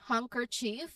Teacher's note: it's often pronounced with a silent letter D as handkerchief, especially in common speech.